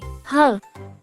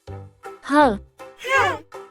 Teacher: sound of the letter H is like a soft H sound it's the sound we hear when we breathe out like when you're feeling hot and say h